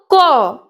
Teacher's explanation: ককে যখন আমরা উচ্চারণ করতে যাই তখন ক অর্থাৎ ক যোগ অ উচ্চারণ হয়। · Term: ব্যঞ্জন ধ্বনি